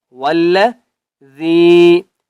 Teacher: واو کو جب ہم نے لام کے ساتھ ملانا ہے تو ہم نے مضبوطی کے ساتھ پڑھنا ہے کیونکہ لام کے اوپر تشدید ہے